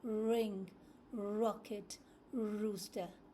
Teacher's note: So your mouth is slightly open. The tongue is curved slightly upwards towards the roof of the mouth without touching it.